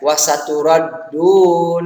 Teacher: hukum ro dibaca tebal tafhim ya, huruf ro berharokat fathah. Karenanya itu harus dibaca dengan tebal.